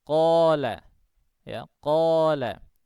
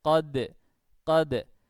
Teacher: menurut mazhab Ibnul Jazari, bacaan qala itu lebih tebal daripada bacaan qad